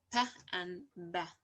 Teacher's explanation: And we have to also consider like a plosive stop sound like p and b. These bilabial sound, we can consider them as a plosive sound.